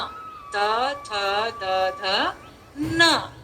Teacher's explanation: जब हमने त बोला त जबान कहाँ टकराई, दांतों पे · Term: दंतव्य